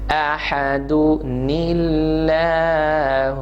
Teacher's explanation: پہلا تو اس کی کنڈیشن یاد رکھیں کہ اگر کبھی بھی تنوین آ جائے, کسی لفظ کے آخر میں تنوین ہو اور اس کے بعد حمزہ وصلی ہو اور اس کے بعد ساکن یا مشدد حرف ہو, تو ہم حمزہ وصلی کو گرا کے ایک چھوٹا سا نون ڈال دیتے ہیں کسرہ کے ساتھ. یہ وہی نون ہوتا ہے جو تنوین کا نون ہے.